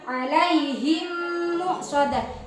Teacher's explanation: Jadi mim mati bertemu mim. Jadi harus dibaca dengung, ya. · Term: idgham mimi